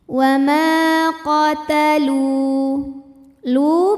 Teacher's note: mad thii zahiri karena ada wau sukun yang sebelumnya berbaris dah cara bacanya dipanjangkan lamnya dua harakat